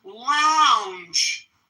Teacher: ends with a final J voiced J